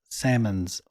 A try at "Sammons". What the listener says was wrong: Not like the fish. The L is silent.